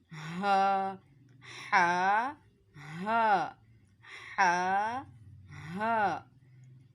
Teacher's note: हलक के निचले वाले हिस्से से अदा होता है।